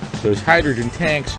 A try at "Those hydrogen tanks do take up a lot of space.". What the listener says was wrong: Those가 중요한 게 아니라 hydrogen tanks, 수소 탱크가 중요한 말이죠. Those hydrogen tanks.